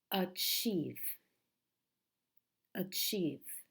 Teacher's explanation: the stress in this word the strong syllable is the second